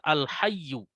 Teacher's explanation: huruf ya di sini ada tasydidnya sehingga aksen kita suara kita harus naik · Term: agak naik